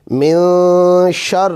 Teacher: اب اس میں اخفاء ہو رہا ہے، نون ساکن کے بعد شین آ رہا ہے